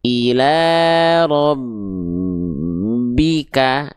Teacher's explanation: Kalau huruf ba karena dia enggak dengung enggak perlu ditahan.